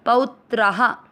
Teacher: प पे औ की मात्रा पौत्रा, त्रा में आ की मात्रा तो विसर्ग को पढ़ेंगे हा।